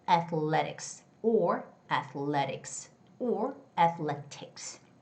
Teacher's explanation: the word athletics has the second syllable stress, so it's going to be athletics, athletics, or athletics, or athletics.